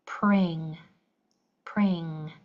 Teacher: back of your tongue is blocking off that sound at the very end. It's an unusual sound for English.